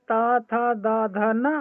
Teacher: और इनको दंत व्यंजन के नाम से जानते हैं।